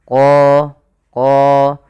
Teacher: huruf qa ini harus kita tebalkan qa karena dia punya sifat huruf isti'la